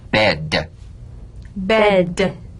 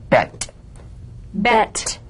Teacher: one has vocal chord vibration the other is unvoiced